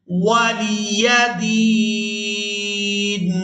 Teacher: वक्फ की सूरत में नून को साकिन कर देंगे। दाल या नून ज़ेर दीन, वलिया दीन।